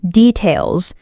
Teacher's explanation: เสียงท้ายคำdetailsที่ต้องก้องไม่ใช่เสียงs